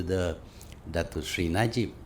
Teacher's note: with Malay English, one of their big characteristics is they sing song going up and down, up and down, up and down